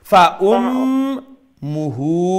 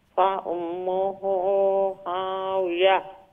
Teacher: আপনার মিম মুশাদ্দার গুন্না মু বাট্টি হইব আর হু লাম্ব হইব